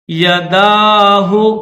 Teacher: اس دال کے اوپر چھوٹا سا الف ہے تو اس کو تھوڑا کھینچیں گے